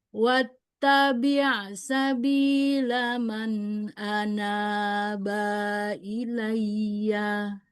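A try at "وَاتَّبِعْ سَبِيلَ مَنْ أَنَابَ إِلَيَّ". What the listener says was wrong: Terus bnya enggak panjang tadi ya. Harusnya enggak panjang.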